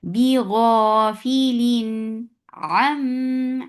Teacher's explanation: This gunna is akmal, so keep the sound in your nose for a longer time. Ma 2 counts long. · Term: sifa gunna